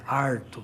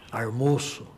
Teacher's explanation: o famoso R retroflexo, que é típico da área caipira